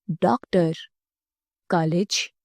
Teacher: आ और ऊ के बीच की आवाज है। इसका प्रयोग अंग्रेजी के शब्दों के लिए किया जाता है। · यह आ और ओ के बीच की आवाज है।